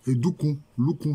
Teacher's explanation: chez les Agnès, le D est devenu allophone du L chez les Baoulés